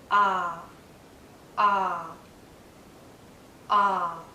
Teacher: My lips are relaxed, but my mouth is in a very open position. My tongue is low inside my mouth. Low and a bit forward so that the tip does touch the back of my bottom front teeth like that.